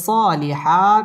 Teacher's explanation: সা খারা জবর একালিফ টেনে পড়তে হবে